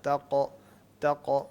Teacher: قاف کو گلے سے نہیں نکالتے، قاف کو زبان کے آخری حصے سے نکالتے ہیں.